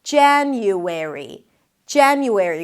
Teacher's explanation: Primary stress is on the first syllable.